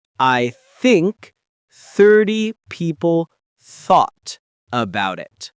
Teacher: No vibration, just gentle air flowing past your tongue.